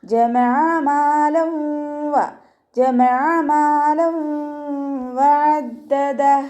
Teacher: അപ്പോൾ നമ്മൾ എന്ത് ചെയ്യും, ഇദാം ബിഉന്നയാണ് കേട്ടോ. തെൻവീനിലുള്ള നൂനിനെ അടുത്ത വാവിലേക്ക് ലയിപ്പിച്ചിട്ട് ഉണ്ണയോടുകൂടി ഓതുക കേട്ടോ.